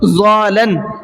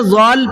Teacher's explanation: لام کی جو تشدید ہے وہ ختم ہو جاتی ہے